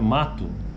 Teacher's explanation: esse U é bem fraquinho · que nós escrevemos m a t o né ou o mato Mas na nossa pronúncia na maioria do do português brasileiro é na verdade sai um u no final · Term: vogal PST tônica final